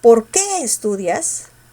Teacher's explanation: la mayor fuerza estaba en el que